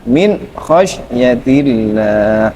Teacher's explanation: Idhar itu tidak boleh ada gunahnya